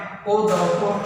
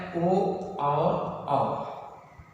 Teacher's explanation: इसे ओ कंठ से भी आवाज आ रही है और ओष्ठ का आकार भी थोड़ा परिवर्तन हो रहा है, ओठ के आकार में भी परिवर्तन हो रहा है। ओ औ इन वर्णों का उच्चारण करने में कंठ और ओष्ठ दोनों का सहयोग है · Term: कंठोष्ठम